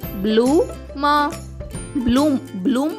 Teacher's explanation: బి L యొక్క శబ్దం బ ల కాకుండా బ్ల అవుతుంది కాబట్టి బి ఎల్ డబల్ ఓ ఎం యొక్క ఉచ్చరణ అవుతుంది బ్లూ మ